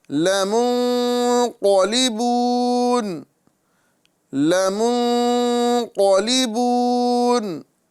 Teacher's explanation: یہاں پر نون کا اکفا کریں گے، یعنی گنہ کر کے پڑھیں گے ، کیونکہ نون ساکن کے بعد قوف حروف اکفا میں سے